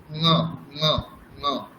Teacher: কণ্ঠর সাথে সাথে একটু নাকে ভাব থাকবে, নাকে উচ্চারণ হবে, ঙ ঙ ঙ।